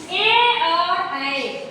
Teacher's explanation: ए और ऐ का उच्चारण स्थान कंठ तालू है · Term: कंठ तालव्य